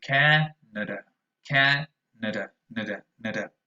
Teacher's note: Spanish speakers might think that you say Canada, and the fact of the matter is that the first vowel sound is very strong. It's actually an ash, ca, but the other two are usually very weak. The other two are schwas.